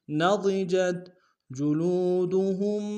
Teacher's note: ضاد کو موٹا ادا کریں گے